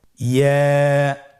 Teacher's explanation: ইয়া হরফটি উচ্চারণের ক্ষেত্রে বারিক হবে এবং 1 আলিফ টেনে পড়তে হবে।